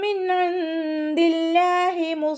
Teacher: നൂൻ സാക്കിനയ്ക്ക് ശേഷം ഇവഹാറിൻ്റെ അക്ഷരമായിട്ടുള്ള ഐൻ വന്നു. നൂൻ സാക്കിനയെ വ്യക്തമാക്കി മണിക്കാതെ ഉച്ചരിക്കുക.